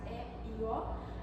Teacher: Quando pronunciamos essas vogais, E e O, a nossa língua vai ficar na posição média baixa.